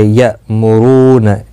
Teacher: حمزہ ساکن کو جھٹکے کے ساتھ ادا کیا جائے گا، را پیش کی وجہ سے پر ہوگا، رو واو مدہ ہے، ایک الف کی مقدار کے برابر کھینچ کر پڑھیں گے۔